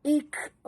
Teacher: kaf itu mati, kena jaga hamasnya. Ikram. Dan ra sini oleh kerana baris atas, kita kena baca tafkhim, tebal.